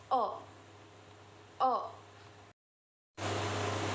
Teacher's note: Lalu yang kelima ada huruf O. Huruf O dibentuk dengan lidah yang berada di posisi tengah dan belakang serta bibir yang membulat.